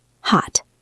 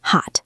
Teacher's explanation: But in casual conversation, I rarely do that. I say hot. I stop the air before it escapes. · The second one is much shorter. It's like hitting a wall. · This usually happens when a T comes at the end of a word, and the next word starts with a consonant, or sometimes just at the end of a sentence. Instead of releasing the air with a T sound, we just cut it off short. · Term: stopped T